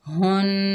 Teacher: आगे नून मुशद्दद है, हा को नून से मिलाएंगे और नून पर एक अलिफ की मिकदार गुन्ना करेंगे। हुन, नून के ऊपर ज़बर, बगैर खींचे पढ़ेंगे ना।